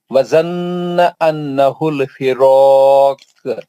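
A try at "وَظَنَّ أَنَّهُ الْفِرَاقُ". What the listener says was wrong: دونوں غنہ ہے نا، زنہ پہ بھی غنہ ہے، انہو پہ بھی غنہ ہے. دوسرا غنہ چھوڑ دیا نا.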